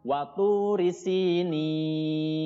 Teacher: Di situ ada watu, tu itu panjang, ya, namanya mad tabi'i, panjangnya 2 harokat.